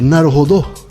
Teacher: vocês têm deixado mais explícita a pronúncia oxítona de Naruhodô